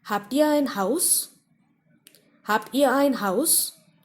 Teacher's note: So Haus is stressed upon.